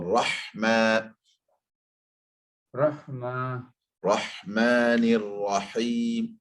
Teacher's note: Ha, to make it tighter, sharper. So ha squeezes out from the middle of the throat. · Better, but just that squeeze your throat, right? The middle of the throat squeezes the sound of ain and ha. Ha is a squeeze in your throat.